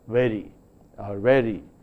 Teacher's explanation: Then we also have speakers finding it difficult to produce a fricative v, fricative v. In the speech of many Indian speakers, the fricative v is often pronounced as an approximant v, or a bilabial v. So very is pronounced as very or very, and this causes a certain problem in understanding the speech, especially of English.